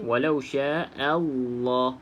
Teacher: pastikan a tu dijelaskan bunyi a, bukan o.